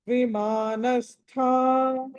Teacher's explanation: థ అన్నది మహాప్రాణం ఒత్తి పలకాలి